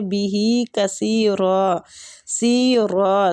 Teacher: سی کو بھی کھینچیں گے، مطلب سا کے آگے یا مد ہے، اور را کو زبر کی وجہ سے پر پڑھیں گے۔